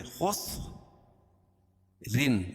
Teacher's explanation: خا کو موٹا پڑھیں گے کیونکہ حروف مستعلیہ میں سے خس رن، دو زیر کی تنوین پر وقف کریں گے تو اس کو جزم سے بدل دیں گے.